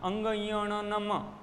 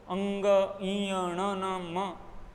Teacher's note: तो कहने का तात्पर्य यह है कि हवा मुख के साथ साथ नाक से भी निकलने का प्रयास करती है और निकलती है, इसलिए इनको नासिक के व्यंजन कहा जाता है।